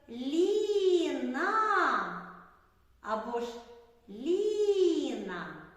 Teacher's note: Ліна так два склади на який склад падає наголос на перший можемо сказати що перший склад наголошений